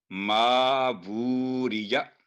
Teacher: ما ووریا الٹی پیش ہے تو آواز 2 سیکنڈ لمبی ہوگی وو کی